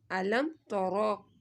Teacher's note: را کو تو موٹا پڑھنا ہے کیونکہ را کے اوپر زبر آ گئی ہے